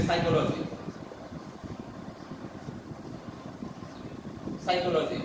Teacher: Psychology, P is not pronounced here.